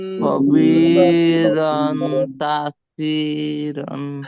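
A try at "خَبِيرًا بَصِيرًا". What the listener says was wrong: আপনার খবি রন হচ্ছে কেন? নুন আসতেছে কেন ভাই? খবি রন আসবে না, খবি রম আসবে। জবর কি কাকে ধরবে? মিমকে ধরবে, ছোট্ট একটি মিমকে ধরবে। খবি, কারণ কি এই যে এই মিমের পাশে কি আসছে বলেন? আসছে, সরি ইকলাবের হরফ আসছে বা। ঠিক আছে, এটা পরিবর্তন করে পড়তে হবে। খবি রম, বলেন।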